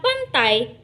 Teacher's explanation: Dalam satu hembusan suara ketika mengucapkan kata pantai, bunyi a dan i tidak diucapkan terpisah, tetapi menyatu menjadi bunyi ai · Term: diftong